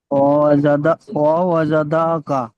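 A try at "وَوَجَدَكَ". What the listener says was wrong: ডালটা টান হয়ে যাচ্ছে, ওয়াওয়াজাদাকা। ডাল টান হবে না, ওয়াওয়াজাদাকা, জাদাকা, জাদাকা। ডালটা টান হবে না, ওয়াওয়া জাদাকা,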